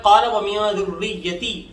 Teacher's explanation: ذریتی کی ذا کو نرمی سے پڑھیں گے اور راء پر تھوڑا سا رک کر سختی سے پڑھیں گے